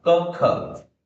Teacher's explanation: One is unaspirated, first one is unaspirated, we call it as alpa prana. Second one is aspirated mahaprana